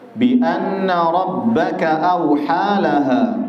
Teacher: Bi anna nun bertasydid dibaca gunnah, ada tempo dua harokat di situ. Rabbaka awha, awha di situ ada mad tabi'i.